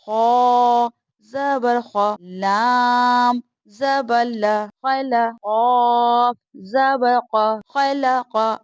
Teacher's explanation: خا بھی حرف مستعلیہ کا حرف ہے اور قاف بھی حرف مستعلیہ کا حروف ہے، تو اس لیے ان کو ہم نے یعنی موٹائی کر کے پڑھنا ہے